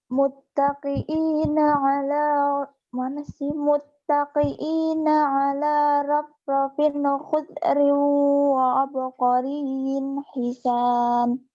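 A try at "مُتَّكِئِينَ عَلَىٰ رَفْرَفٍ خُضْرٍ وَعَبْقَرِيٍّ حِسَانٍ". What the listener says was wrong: Berarti waktu muttaqi'i kaf biasa ya, muttaqi'ina, dan itu hamzah biasa.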